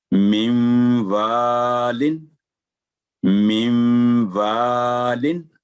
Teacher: آگے نون ساکن کے بعد واو پر تشدید ہے تو نون اظہار کی جو آواز وہ ختم ہو گئی، غنہ ہوگا